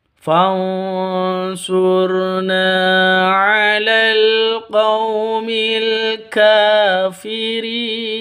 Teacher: Cara membacanya samar dan sengau, mempersiapkan huruf shad karena itu adalah Ikhfa Haqiqi. Huruf 'r' adalah ro yang tebal, ro tafkhim, tebal, ya, sur sur fansurna.